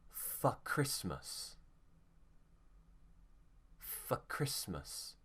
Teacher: So if for is not stressed, it will become f.